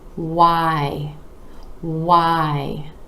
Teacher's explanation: to really round your lips for that what what sound then the jaw dropping down and up for the I